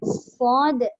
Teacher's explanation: Kalau kita menyebut sa, pastikan hujung lidah lah keluarkan. Sod tu memang dia tak keluar hujung lidah lah sebab dia duduk di bawah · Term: sad